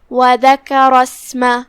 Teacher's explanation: کلمت وذکر دال پہ، کاف پہ، را پہ، تینوں پہ زبر ہے تو ہم تینوں کو برابر سے ادا کریں گے، زبر سے کسی ایک کو کم نہیں کریں گے. آخری میں را پہ زبر ہے تو یہاں را کا حکم ہے تفخیم، لہذا اسے بھاری آواز میں پڑھنا ہے · یہاں شروعات میں الف ہے لیکن یہ حمزت وصل ہے. حمزت وصل اگر ہم یہ آیت ساتھ میں پڑھیں گے تو اسے ظاہر نہیں کریں گے، لیکن اگر صرف وہی کلمہ پڑھتے ہیں تو اسے ظاہر کریں گے.